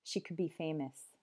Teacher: I go and instead of could you might just hear cook the whole ending disappears the whole LD sound